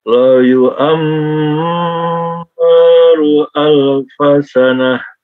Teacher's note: Yu'ammaru ada mim tasydid ditahan 2 harokat